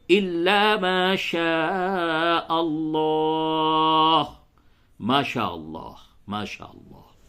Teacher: لفظ اللہ کو پڑ کر کے پڑھیں گے، یعنی اسے موٹا کر کے پڑھیں گے